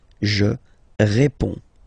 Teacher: you can see that D and S here are not pronounced